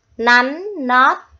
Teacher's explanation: các con lưu ý cho cô vần ót ở tiếng nót có âm tờ cuối. Khi đọc, đầu lưỡi của các con phải chạm răng trên.